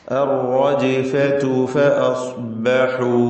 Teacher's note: അർ-റജ്ഫ റാ തഫ്ഖീമാണ്, തടിപ്പിച്ച് റാഇനെ ഉച്ചരിക്കണം. ശദ്ദ ഉള്ളതുകൊണ്ട് മുശദ്ദദത്ത് ആയതുകൊണ്ട് തക്രീർ വരാതെ സൂക്ഷിക്കേണ്ടതാണ്